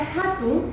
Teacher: En cuanto a la H, esta constituye una aspiración ligera en la zona glottal, muy parecida a la J de la Amazonía